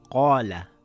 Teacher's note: Qaaf is a heavy letter, the alif also becomes heavy, it will make an aarr sound. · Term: heavy sound